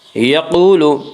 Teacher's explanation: یقول قاف کو پر پڑھیں گے، قاف حروف مستعلیہ میں سے ہے۔ حروف مستعلیہ 7 ہیں جن کا مجموعہ خصہ ضغط قز ہے، جو ہمیشہ ہر حال میں پر پڑے جاتے ہیں۔